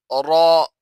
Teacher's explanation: یہ را جو ہے یہ بھی حروف مستعلیہ میں سے ہے، تو اسے بھی پر پڑھا جاتا ہے